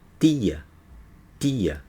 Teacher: quem mora no Nordeste, ele vai falar tia, tia, ponta da língua atrás dos dentes de cima